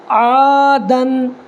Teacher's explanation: الف مدہ کی مقدار ایک الف کے برابر کھینچ کر کے پڑھنا ہے، اور ایک الف کی مقدار 1 سیکنڈ کھینچنا ہے